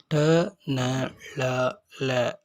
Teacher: ட, ந, ல, ல ஆகியவற்றை நாக்கினை மேல் நோக்கி வளைத்து நடு அன்னத்தை தொட்டு உச்சரிப்பதால் இதனை வளைனா ஒலிகள் என்பர்.